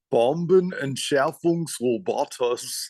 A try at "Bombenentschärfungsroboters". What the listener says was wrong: Ja, sehr gut.